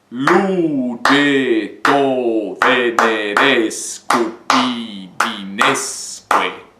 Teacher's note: Lembrando de elidir ali o E com O, eu corto o E e digo lugetto, certo?